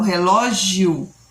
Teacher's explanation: Ou seja, quando eu falo relógio, eu acabo acentuando, falando mais forte o O do que o I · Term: ditongo crescente